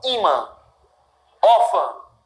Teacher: Sílaba tônica, im, or. Sílaba tônica é a penúltima. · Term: paroxítona